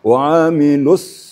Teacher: Nah, kemudian tasdid tentang sad itu lebih penekanan lagi karena sifatnya adalah safir. Safir itu lebih berdesis, lebih tajam desisnya